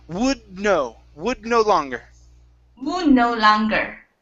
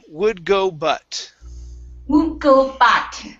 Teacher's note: You want to only pronounce half of the D sound